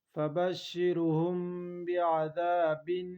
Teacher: دو زیر بن، بعذاب، فبشرهم بعذاب، یہاں انقلاب کریں گی کیونکہ میم ساکن کے بعد حروف با آیا ہے، غنہ کے ساتھ انقلاب کریں گی